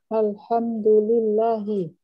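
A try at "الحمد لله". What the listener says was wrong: Aywa. Alhamdulillahi. Naam.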